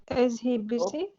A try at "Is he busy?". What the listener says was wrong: No, don't say the H.